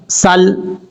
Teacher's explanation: सीन को बारीक पढ़ा जाएगा क्योंकि ये हरूफ सफ़ीरिया में से है, इसलिए इसमें सीटी भी आएगी। इस तरीके से सीन लाम ज़बर सल पढ़ा जाएगा।